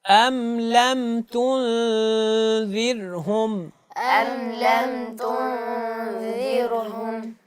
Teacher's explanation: ذال کی ادائیگی میں سیٹی نہ ہو